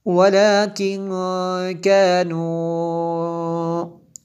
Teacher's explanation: نون ساکن ہے اس کے بعد کاف حروف اخفا میں سے، یہاں پہ اخفا ہوا۔ آگے یہ جو مد میں نے اس پہ یہ جو مد ہے اس پہ کو میں نے کھینچا ہے تو یہ مد منفصل ہے کیونکہ حمزہ دوسرے کلمے میں ہے۔